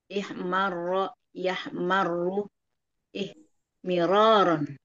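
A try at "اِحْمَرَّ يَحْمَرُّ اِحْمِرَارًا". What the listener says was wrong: Bagus.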